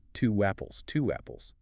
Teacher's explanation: You are inserting a W that does not exist in the spelling. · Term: intrusion